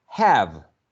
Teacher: When we have this word in isolation, for example, when we go online or we look it up in a dictionary, we find that have is transcribed with a trap